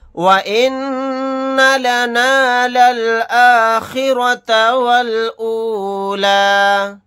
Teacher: نون کے اوپر تشدید ہے تو یہاں پر ہم غنہ کر کے پڑھیں گے